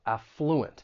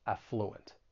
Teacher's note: the stress is going to be on that first syllable, affluent. Now, that is the way you're going to find it in most English dictionaries.